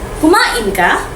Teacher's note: Naging tanong dahil tumaas ang tono sa dulo.